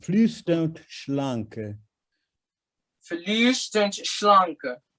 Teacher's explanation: I need to hear a T sound after flüsternd, because the D is a T sound.